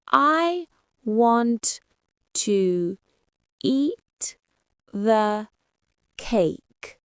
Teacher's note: the strong words are want, eat, and cake. You hear them clearly. But to and the are very fast and soft.